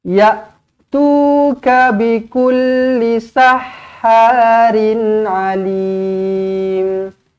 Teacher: Lim mad arid disukun, boleh baca dengan 2 atau 4 atau 6 harakat.